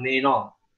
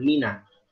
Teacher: Jangan mena, jangan me, jangan mengarah kepada e, dan juga nunnya jangan mengarah kepada o, mino. Jadi jangan meno, jangan menos syaito, menos.